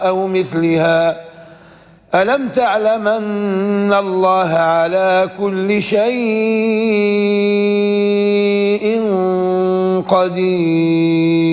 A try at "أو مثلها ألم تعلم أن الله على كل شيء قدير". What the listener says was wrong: هذا طول ولا توسط؟ جبت هو مفروض تجيب التوسط يعني طول البدن عليه توسط وطول في الليل. توسط البدن عليه توسط. القصر عليه توسط والتوسط عليه توسط والطول عليه توسط وطول. فكان المفروض أنك تأتي بتوسط الليل على طول البدن هو الأول. عكست يعني.